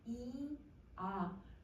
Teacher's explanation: 그래서 여러분 혀의 높낮이가 너무 중요한데 자 우선 혀의 높낮이는 혀를 여러분 이 발음할 때랑 바로 이 발음하고 아 발음 해보시면 이, 아 그러면 혀가 아래로 이렇게 내려가는 거 알겠죠?